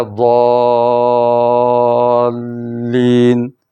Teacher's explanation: اس شد نے پچھلی زبر کو لمبا کر دیا، زیادہ مد کر دیا